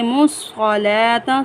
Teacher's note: واو خالی ہے، واو کو ہم نہیں پڑھیں گے۔ میم کو ڈائریکٹ صاد مشدد کے ساتھ ملائیں گے۔ مُصَّلَاةَ، صاد کو ہم پر پڑھیں گے، صاد حروف مستعلیہ میں سے ہیں۔ · یہاں پر لام پر کھڑی زبر ہے، لام کو ایک الف کی مقدار کھینچ کر پڑھیں گے۔